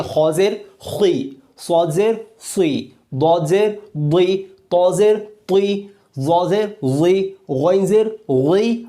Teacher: یہ زیر آنے سے بھی پر پڑھے جاتے ہیں، اسی لیے ان کو ہم پر حروف بھی کہہ سکتے ہیں